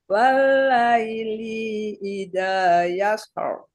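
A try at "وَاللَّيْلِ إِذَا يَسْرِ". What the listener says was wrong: Linya masih kepanjangan, Bu. Walaili.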